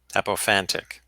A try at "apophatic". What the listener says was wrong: Apophatic. No N.